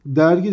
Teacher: düz ünlüyle başlamış, düz ünlüyle bitmiş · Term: küçük ünlü uyumu